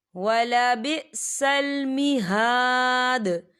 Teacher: دال پر کلکلا ہوگا کیونکہ یہاں پر آیت ختم ہو رہی ہے. آیت جب ختم ہوتی ہے تو دال ساکن ہو جائے گا، تو یہاں پر کلکلا ہوگا.